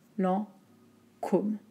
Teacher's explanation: juste attention au en, voyelle nasale